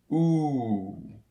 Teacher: this vowel sound is produced with a tongue near the top and back of the mouth and with the lips rounded into a small o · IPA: [u:]